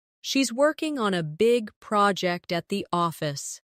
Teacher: Stress working big project and office.